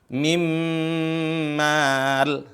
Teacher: Ya, kalau temu dengan mim, mim mal, min mal. Asalnya dari min sama mal. Tapi nun berlebur ke huruf mim.